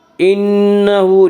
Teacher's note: انہ نون مشدد غنہ ہوگا، غنہ کی مقدار 1 الف ہے۔ انہ ہا کے اوپر الٹا پیش ہے، الٹا پیش قائم مقام ہے واو مدہ کے، اس لیے الٹا پیش کو 1 الف کے برابر کھینچ کر پڑھیں گے۔